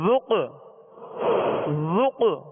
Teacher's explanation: اس میں قلقلہ ہوگا، آواز میں جنبش ہوگی اور آواز لوٹتی ہوئی آئے گی